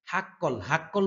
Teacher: হা কণ্ঠনালীর মধ্যখান থেকে উচ্চারণ হয়